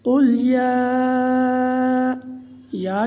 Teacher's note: قل یا کے اوپر ماد منفصل ہے، جس کو 4 الف کا برابر لمبا کرنا ہے، اور کھڑی زبر بھی ہے جس کی مقدار 1 الف کا برابر ہے۔